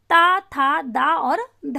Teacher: जीभ जो है वो दांत का स्पर्श करती है जब हम त थ द धा बोलते हैं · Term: दांत से बोली जाने वाली